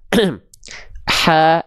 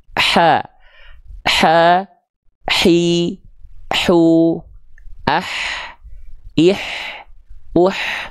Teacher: Bagian katup epiglotis inilah yang nanti akan menyempit ke arah dinding tenggorokan untuk berkontraksi, sehingga keluarlah pelafalan H kecil dengan karakteristik nafas yang berbisik